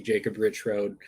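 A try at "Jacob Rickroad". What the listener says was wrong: Rick Road, You said Rich Road. But it's not.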